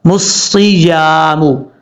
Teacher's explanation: یا الف زبر یا، میم پیش مو، مسیامو، صاد حروف مستعلیہ میں سے پر پڑھا جائے گا، اور جب تک اس کو پر نہیں پڑھیں گے اس وقت یہ صحیح طریقے سے ادا نہیں ہوگا۔ اس کو پڑھتے ہوئے سین کی اس کو پڑھتے ہوئے سیٹی بھی آئے گی کیونکہ یہ حروف صفیریہ میں سے ہے۔